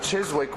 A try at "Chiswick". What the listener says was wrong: You don't pronounce the W.